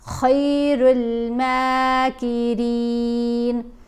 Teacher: اب خا کو بھی موٹا پڑھنا ہے، لیکن خا کے اوپر زبر ہے، ساتھ یا ساکن ہے تو یہ لین حرف ہے۔ اب خا زبر خا نہیں پڑھا گیا بلکہ خی پڑھا گیا، خیر الماکرین۔